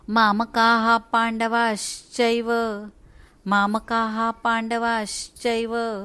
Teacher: श्री मधला श, तो श अर्धा आहे, त्यामुळे तो शहामृगातला श अर्धा म्हणायचा